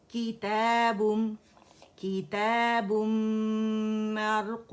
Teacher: نون جو ہے تنوین کا وہ اس کے اندر مرج ہو گیا اور میم مشدد ہو گیا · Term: غنہ اکمل ما تکون